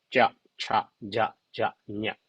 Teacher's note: And then the second group, maybe middle part of our tongue touch to our palate